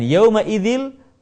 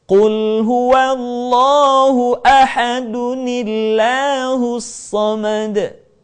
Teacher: nun yang dibaca dengan harokat kasrah manakala kita menemukan huruf yang berharokat tanwin bertemu dengan hamzah wasal. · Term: nun wiqayah